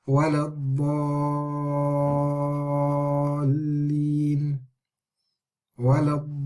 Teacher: the sound sort of stays on the lam because of the shadda